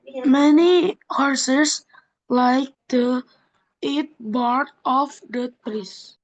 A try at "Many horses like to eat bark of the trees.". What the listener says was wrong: Nah, yang terakhir masih satu kata-satu kata karena enggak didekatin bunyinya.